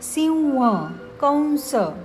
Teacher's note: त्यापुढे र श स ह यापैकी कोणतेही अक्षर आले असेल तर अनुस्वाराचा उच्चार अनुनासिक व असा होतो